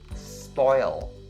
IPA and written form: spɔɪl (spoil)